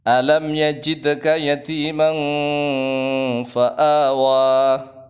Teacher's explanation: Kemudian yang sebenarnya itu tanwin ketemu fa. Ya, tanwin ketemu fa, maka dibaca yatiman samar, ikhfa artinya menyamarkan bacaan